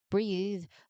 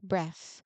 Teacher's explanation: A common mistake is to turn the voice off early at the end of the words, like breathe, which can make it sound like breath.